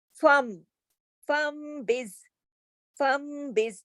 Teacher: نون کو میم سے بدل کر غنے کے ساتھ پڑھا جاتا ہے، اسے اقلاب کہتے ہیں۔